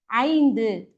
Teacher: ஐந்து அப்படின்னு மொழிக்கு முதல்ல வரும்பொழுது தனக்குரிய 2 மாத்திரை அளவிலிருந்து அரை மாத்திரை குறைந்து இதோடைய ஒலிப்பு மாத்திரை எவ்வளவுன்னு பார்த்தீங்கன்னா 1.5 மாத்திரை அளவாக ஒலிக்கும் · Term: ஐகார குறுக்கம்